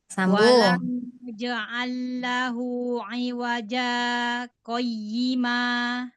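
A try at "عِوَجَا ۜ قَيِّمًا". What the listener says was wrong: Jimnya sudah betul tadi pengucapannya qalqalahnya. Tapi ibu kurang lama berhentinya.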